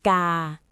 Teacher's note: It is mid-class consonant plus long vowel plus no tone mark, so the tone is mid.